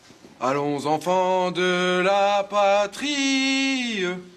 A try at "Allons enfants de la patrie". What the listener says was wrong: C'est pas mal, essayez d'être juste un tout petit peu un ton en dessous. Écoutez, allons enfants. Il y a la liaison. Allons enfants. Allons.